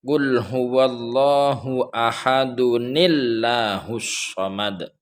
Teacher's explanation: Suatu contoh, qul huwallahu ahad, itu harakatnya kan ahadun, dalnya tanwin, tanwin dhammatain, ahadun itu berbunyi dun, ada u sama n. Ketika di wasol mau dilanjutkan, bacaannya disambung, maka nunnya itu menjadi kelihatan hidup, terbaca.